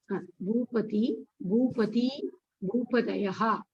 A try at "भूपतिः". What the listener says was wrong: Bhupatihi. I'm not hearing the Visarga sound.